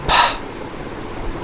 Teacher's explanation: Pa is voiceless because vocal cords do not vibrate when you pronounce it, and it is stop because you stop the air between the lips with the help of 2 lips, and then you release it suddenly, creating aspiration. Aspiration means that sound, as you have in pool.